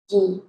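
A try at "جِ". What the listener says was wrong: Ah, ingat jim nggak boleh mendesis. Ji. Nah begitu, jangan ci, tapi ji.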